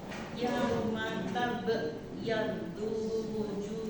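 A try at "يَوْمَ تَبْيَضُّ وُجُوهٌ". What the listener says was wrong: Tunya pendek. Yaddu langsung masuk dulu.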